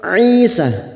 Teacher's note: huruf ain jangan samakan dengan hamzah, huruf ain yang memiliki sifat tawassut dan jahar